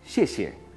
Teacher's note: Y cuarto tono, descendente, casi como con tilde.